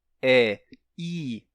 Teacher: Mas quando você diz é i, a língua já é projetada pra frente e sobe. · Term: vogais palatais